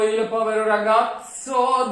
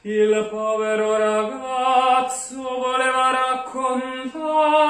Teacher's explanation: And also, another very common mistake, don't go il povero ragazzo, don't eat up the space time of the a of ragazzo, which is the tonic vowel of the word, and the strongest vowel in this very phrase